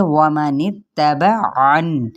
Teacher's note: ومن اتبعن، وما واو کو ہونٹوں کی نا تمام گولائی کے ساتھ ادا کرنا ہے، نون کی زیر کو تا کے ساتھ ملائیں گے